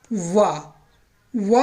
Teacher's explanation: ये दांत और ओष्ठ दोनों से मिलकर के बोला जाता है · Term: दंतोष्ठ